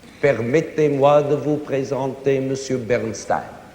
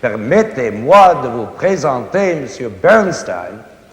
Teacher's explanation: All the syllables have to be alike in stress. · Almost every syllable in it is equal, not in length, but in stress, in accent. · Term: equal stresses